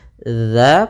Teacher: Baik, pada bacaan wa idza qila, pada lafaz za di sini hati-hati dalam pelafalan zalnya, jangan sampai terbaca dengan bacaan za dengan za yang besar, akan tapi di sini bukan zai ya, bukan, akan tetapi dia zal kecil. Za, posisi lidah kita adalah ujung lidah kita menempelkan dengan gigi seri atas atau sedikit tergigit ya